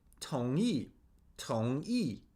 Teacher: So the tone on 同 is rising. It's the second tone. 同, and then E is the fourth tone, or the falling tone.